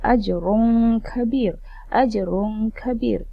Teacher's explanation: Bila tanwin bertemu dengan huruf kaf, maka anak-anak kena bacanya dengan dengung sebab hukumnya adalah ikhfa' hakiki.